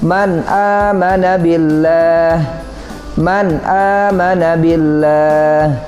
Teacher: Ya, di situ ada nun sukun bertemu dengan hamzah pula di depannya. Nah, cara bacanya dibaca jelas, tidak boleh didengung. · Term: izhar halqi